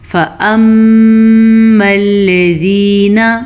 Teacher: میم پہ شد ہوگی تو ہم غنہ کریں گے